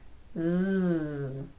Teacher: For the z sound, you should be able to feel your throat vibrating because your vocal folds are moving.